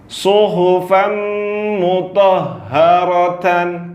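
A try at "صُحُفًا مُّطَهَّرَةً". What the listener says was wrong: Huruf H lebih jelas. Suhu.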